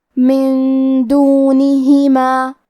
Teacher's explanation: کلمت دونہما دال حروف الاخفاء میں سے ہے اور اخفاء کا معنی ہے چھپا دینا، تو ہم نون ساکن کو چھپاتے ہوئے اور غنہ کے ساتھ یہ حکم کو ادا کریں گے